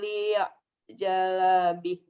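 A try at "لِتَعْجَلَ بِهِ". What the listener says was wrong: Pendek.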